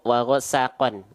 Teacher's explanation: atas dua kan fatahain harusnya kan dibaca dengan vokal an Cuman karena Q Huruf tebal maka dibacanya jadi vokal o